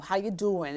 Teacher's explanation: It's Jersey and the Bronx, and there's these long vowel sounds.